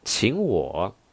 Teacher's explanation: this girl raises her tone because the feeling is like, treat me?